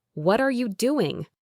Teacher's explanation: Express curiosity with a falling intonation on doing.